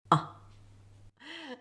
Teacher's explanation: To make the first sound we start with /ʌ/. The tongue is low and central. The jaw is open, and lips are open.